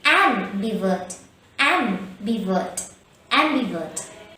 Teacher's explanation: Am-bi-vurt. The stress is on the first syllable am.